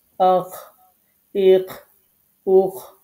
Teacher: এটি হচ্ছে হলকের শেষ ভাগ বা কণ্ঠনালীর উপরি ভাগ, যেটাই আপনি বলেন। এখান থেকে দুইটি হরফ উচ্চারিত হয়, একটি হচ্ছে গাইন আর একটি হচ্ছে খ।